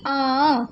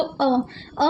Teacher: तो अ अ हमने एक सास में जल्दी से बोल दिया हमें आ बोलने में थोड़ा सा समय लगेगा अ फट से हो गया जल्दी-जल्दी से हो गया